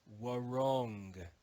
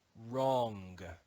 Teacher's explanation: in Modern English the W is ignored we don't read this word as war wrong in Modern English we read it as wrong the W is silent